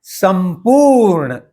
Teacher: इसी तरह से संपूर्ण शब्द जो है लिखते समय स पे बिंदी दे के लिखा जाता है हिंदी में, लेकिन मराठी और संस्कृत भाषा में इसको म आधा करके फिर उसमें पू जोड़ के संपूर्ण, इस तरह से उच्चारण किया जाता है